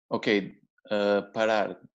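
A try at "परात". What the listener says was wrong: Parāt. Parāt. It's a T at the end. Yes. Parāt.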